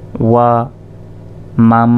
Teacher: তাই এই মিম গিয়ে সরাসরি এই মিম কে ধরবে আর এখানে গুন্না হবে কারণ নুন সাকিনের পর মিম এসেছে